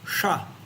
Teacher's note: you use even more energy when you're going to say the palatal sha, because it goes all the way up to the palate